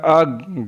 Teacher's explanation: गाफ ज़बान की जड़ और तालु के सख्त हिस्से से अदा होता है।